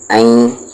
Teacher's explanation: یہاں پر ای نہیں ہوگا بلکہ این ہوگا، آواز کو ناک میں رکھیں گے